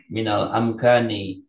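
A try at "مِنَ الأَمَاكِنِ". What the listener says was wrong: amkani, kan alifnya di mim bukan di kaf.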